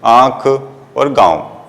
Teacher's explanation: इसका उच्चारण मुंह और नाक दोनों से होता है। · यह चिन्ह भी वर्णों के ऊपर लगाया जाता है, जैसे आंख और गांव। जब इस चंद्र बिंदु का प्रयोग किए जाते हैं तो आपका मुख और नाक दोनों ही थोड़ी देर के लिए कंपन करते हैं, तो यह कहते हैं कि मुख और नाक दोनों से बोला और कहा जाता है। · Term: अनुनासिक